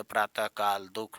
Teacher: किंतु संस्कृत में यह ह से भिन्न ध्वनि रही है ठीक ह घोष व्यंजन है जबकि विसर्ग अघोष